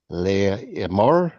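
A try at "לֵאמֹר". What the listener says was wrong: The aleph here has no vowel, because at the end of the syllable it has quiesced, lengthening the previous vowel. Le more, to say.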